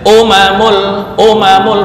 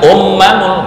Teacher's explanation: ini enggak ada tasydid ya. Umamul bukan ummamul.